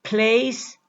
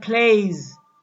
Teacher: The strong consonant S makes the vowel that precedes it, that comes before it, shorter, whereas the weak consonant Z makes the vowel that comes before it longer.